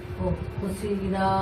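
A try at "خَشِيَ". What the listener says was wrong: খসি খসিয়া ইয়াটা বাদ যাচ্ছে খসিয়া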